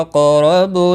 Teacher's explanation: را زبر کی وجہ سے پر پڑھا جائے گا